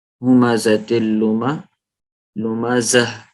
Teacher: جب رکتے ہیں اس کے اوپر، تو پھر ہم کیا کرتے ہیں؟ اس کو ہا کی آواز نکالتے ہیں